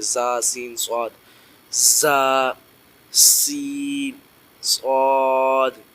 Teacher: دونوں دانتوں کو جو ہے نا اوپر لگا کے تھوڑا سا زور سے ہم نے سیٹی نما آواز نکالنی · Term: حروف صفیریہ